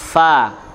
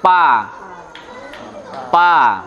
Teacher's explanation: yang berfungsi itu malah gigi seri atas dengan bibir bawah